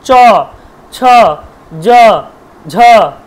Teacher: সবগুলি উচ্চারণস্থান কিন্তু আমার তালু এজন্য এদেরকে বলা হয় তালব্যয় বর্ণ